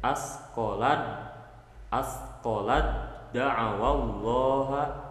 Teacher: Jadi bunyi taknya itu sudah tidak ada lagi karena diidghamkan ke dal. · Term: idgham mutajanisen